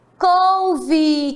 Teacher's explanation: Observe que a palavra couve é escrita com E no final, porém tem o som de I.